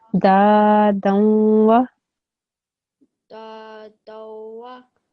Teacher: After the dal, there is an alif. It's an alif madda, okay? So this dal sound needs to be prolonged